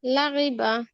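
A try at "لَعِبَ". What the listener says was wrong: লাইবা। আইন উচ্চারণ খেয়াল করে আপু। লাইবা।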